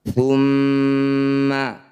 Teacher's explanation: Thumma, mim atau nun yang bertasydid pada semua ayat di Al-Quran disebut bacaan gunnah musyaddadah. Cara bacanya bunyi mim dengungkan, ditahan dulu 2 harokat. Thumma, 2 harokat itu sama dengan 2 ketukan.